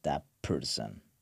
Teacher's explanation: So, what happens here T assimilates to P like “t” sound assimilates to “p” sound